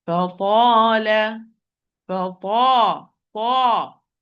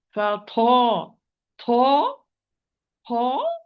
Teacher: when I'm pronouncing the ta, there is no flow of breath. There is no flow of breath, but it's an apparent, so there is an imprisonment of the flow of the breath. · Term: majhur letter